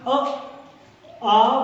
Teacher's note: अ, आ बोलेंगे तो कंठ होगा, इनका उच्चारण स्थान कंठ होगा